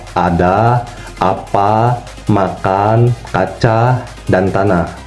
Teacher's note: A itu adalah huruf vokal yang posisinya rendah bawah depan. Jadi huruf vokal A itu posisi lidahnya sangat rendah dan tidak dimaju ke depan. Untuk posisi bibir, dia terbuka lebar dan tidak dibulatkan.